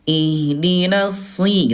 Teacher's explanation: huruf shad dia walaupun kasrah dia tetap dibaca tebal